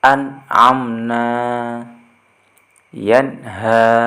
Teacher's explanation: Jadi, apabila kita membaca Al-Quran, ada salah satu huruf nun mati ataupun tanwin, baik fathah tanwin, kasrah tanwin, ataupun dhammah tanwin, bertemu salah satu huruf yang 6 tadi yang disebutkan, maka cara membacanya harus jelas tanpa mendengung, yaitu dinamakan izhar